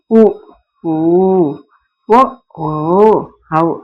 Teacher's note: இதழ் உ ஓ ஔ அப்படின்னு இதழ் குவியும் பாருங்க. 5 இவை இதழை உதட்டை குவித்து கூறுகின்ற முயற்சியால் பிறக்குது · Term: இதழ் குவிந்து